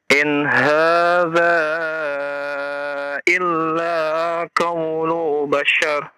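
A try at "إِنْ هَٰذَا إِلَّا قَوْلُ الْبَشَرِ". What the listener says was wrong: Ada lam sukun di sana ya. Dibaca. Ulang lagi.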